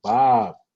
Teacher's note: that last b is not a plosive b it's called a fricative b so it happens when your lips or your label uh vibrate